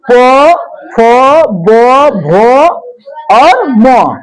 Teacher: प फ ब भ और म का उच्चारण स्थान ओष्ट है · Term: ओष्टय वर्ण